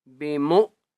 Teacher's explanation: واو کے اوپر حمزہ ہے اس لیے میم کو جھٹکا دے کر پڑھیں گے